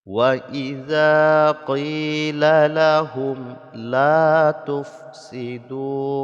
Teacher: lahum mim sukun bertemu dengan lam dibaca izhar, jadi tidak boleh didengungkan, ya, dibaca mim sukunnya dengan jelas.